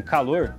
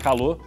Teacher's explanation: Tirar o R do final de algumas palavras